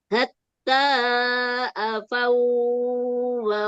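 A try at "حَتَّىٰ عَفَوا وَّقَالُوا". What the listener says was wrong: Jangan dipanjangin, jangan dipanjangin. Hatta afau wa langsung afau wa qa, jangan dipanjangin.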